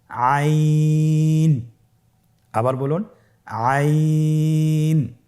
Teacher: আইন হরফটি উচ্চারণের সময় অবশ্যই 3 আলিফ টেনে পড়তে হবে এবং আইন হরফটি বারিক হরফ, পাতলা করে পড়তে হবে।